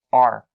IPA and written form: ɑːr (our)